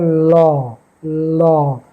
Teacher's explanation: জিভটা ভাঁজ হয়ে যাচ্ছে উপরের দিকে, কিন্তু পাশ দিয়ে ওই ভাঁজ হওয়ার জন্য এটা গ্যাপ হয়ে যাচ্ছে পাশ দিয়ে, দিয়ে হাওয়াটা বার হচ্ছে, ওই জন্য ল, এটা হচ্ছে পার্শ্বিক ধ্বনি।